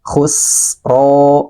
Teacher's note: ro panjangkan dua harakat